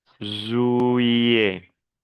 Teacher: Le T final ne se prononce pas.